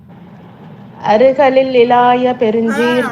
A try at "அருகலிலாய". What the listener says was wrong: அருகலில் இலாய கிடையாதுமா, அருகல் இலாய. இந்த அதேதான் அருகல் இலாய. ஒரு லீ தான் வரணும், ரெண்டு லீ வரக்கூடாது. அருகலில் இலாயன்னு இருந்தா அடிச்சிருந்தோம். அருகல் இலாய அவ்வளவுதான். அருகலில் இலாய கிடையாது, ரெண்டு லீ வரக்கூடாது.